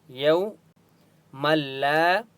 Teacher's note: میم کو لام کے ساتھ ملائیں گے تشدید کی وجہ سے. الف مدہ ہے، لام کو ایک الف کی مقدار کھینچ کر پڑھیں گے.